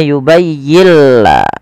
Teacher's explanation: Idghamnya adalah nun sukunnya diidghamkan ke huruf lam. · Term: idgham bila gunnah